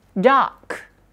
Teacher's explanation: Kalau di British R-nya hilang. Jadinya water, water. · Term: non-rhotic